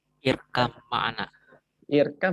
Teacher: Jangan lupa rohnya tebal. Walaupun dia sebelumnya kasroh, roh tafkhim itu tebal.